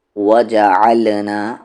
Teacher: عین کا مخرج مڈل تھروٹ، بیچ والا حلق